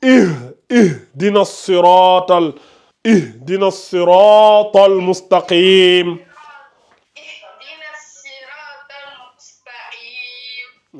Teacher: Parce que si tu dis ihi, c'est comme si tu rajoutais une kasra ici. Alors que non.